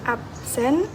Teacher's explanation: Contohnya kata absen, kadang diucapkan jadi absen karena bunyi B terpengaruh oleh S di belakangnya, jadi berubah ke P agar lebih mudah diucapkan. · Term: asimilasi progresif